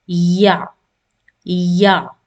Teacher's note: or any teeth in front it's just in the middle and the middle of the tongue is raised up to the roof of the mouth but it is slightly touching it's not touching fully or sticking to the roof of the